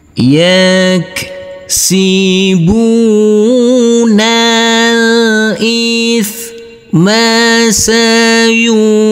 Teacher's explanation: Huruf jim harus kita pantulkan karena ini adalah bacaan qalqalah.